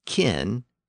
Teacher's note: Kin ended in a simple N sound, so it kept its short vowel.